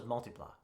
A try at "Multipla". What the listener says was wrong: Yeah, but you're emphasizing the pla.